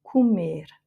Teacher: Comer, c'est le cas de figure où il y a un R en dernière lettre du mot et le E juste avant, donc c'est un E fermé.